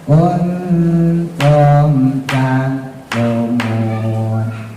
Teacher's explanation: Jadi izhar syafawi itu setelah mimnya sempurna, tum langsung masuk ke huruf selanjutnya.